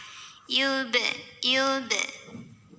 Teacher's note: Karena ada huruf qalqalah yaitu ba yang sukunnya asli dan ada di tengah bacaan. Maka cara bacanya dipantulkan dengan pantulan yang kecil dan tetap mengalir. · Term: qalqalah sugra